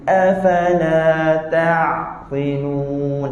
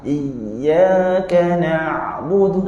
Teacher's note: Yang betul kita sebut ain tu dalam sedikit, tapi suara tak putus.